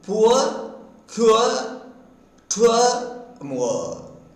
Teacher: first U is produced by raising the back of the tongue. Then A is produced by raising the center of the tongue, and then U is moved towards A. · The lips are closely fully rounded for U and neutral for A. The tongue changes from tense position to lax position. That is, the tongue is tense for U and lax for A.